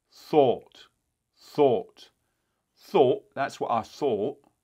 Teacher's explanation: what tends to happen for many British speakers is that it actually gets a lot of additional rounding. In fact, it may get so much rounding that it starts to almost become maybe a pure oh, thought, thought, thought, that's what I thought. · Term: additional lip rounding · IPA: ɔ̹